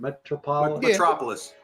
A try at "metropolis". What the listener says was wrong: Metropolis. You got the emphasis on the wrong syllable.